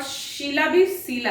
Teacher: सभी लोग स करते हैं, यानी सुमन भी स है और शीला भी सीला है